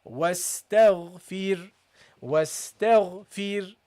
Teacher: Make the ra light. Why? Because the ra is non-voweled, and before the ra there is a kasra. So you have to read it lightly.